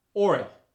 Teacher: the oi sound, like oil, gets an added R. For instance, oil becomes Oil.